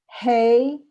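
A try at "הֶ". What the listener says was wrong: Not hey, but he, because it's the 3 dots.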